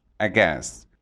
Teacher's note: The stress is on the second syllable, aghast. Aghast.